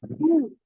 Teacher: रू पढ़ने के लिए आपके होंठ गोल हो रहे हैं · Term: पेश